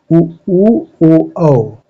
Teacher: वृत्तमुखी स्वर जिस स्वर का उच्चारण करते समय ओंठ जो है गोलाकार बन जाता है, उसे वृत्तमुखी स्वर कहते हैं।